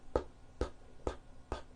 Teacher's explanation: the P sound is what we call unvoiced because there is no voicing. And this is the sign I'm going to make when there is no voicing.